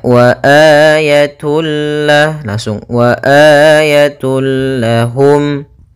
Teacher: idgam Bil gunah yaitu huruf lam di sini maka cara membacanya masukkan tanwinnya kepada huruf lam tanpa ditahan gunah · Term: Idgham bila ghunah